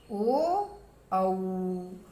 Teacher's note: औ का जो उच्चारण स्थान है वो कंठ और ओष्ठ दोनों से मिलकर होता है